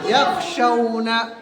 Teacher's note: खा ऑलरेडी पुर होता है, इसलिए उसको क्या करेंगे, मोटा करके पढ़ेंगे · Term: खा को पुर